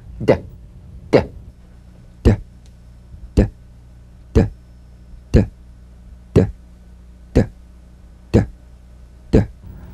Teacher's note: Voiced tongue front palatal stop consonant. Play this D drum beat on the springing away of the tongue from the upper gum ridge. Feel a pulsation in the tongue. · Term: drum beat D